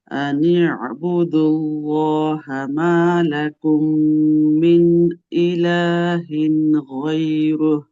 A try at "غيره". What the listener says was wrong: রু এর মুখ গোল করেন, গায়রু।